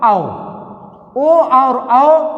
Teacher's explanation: ओ और औ दोनों वर्णों का उच्चारण हम कंठ और ओष्ठ की सहायता से कर सकते हैं।